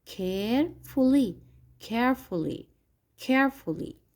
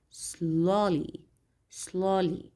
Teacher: So the adverb here in the sentence is stressed on the vowel here A. And always we have the stress on the first syllable